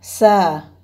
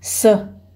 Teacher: Са – это будет уже длинный звук, а с – короткий звук – это совсем другое слово.